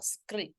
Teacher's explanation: There's a little roll of the R, just a tiny little skrit.